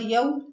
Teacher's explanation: واتقو یا واو زبر یو، اب یو میں دیکھیں واو ساکن اس سے پہلے زبر واو لین ہے، نرمی اور جلدی سے پڑھیں گے، یو نہیں پڑھیں گے۔